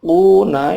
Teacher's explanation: ada wawu mati, sebelumnya ada dhamma, dipanjangkan dua ketuk, mad tabi'i namanya